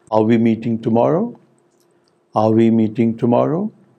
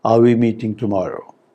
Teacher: the rising tone is typically used for yes no questions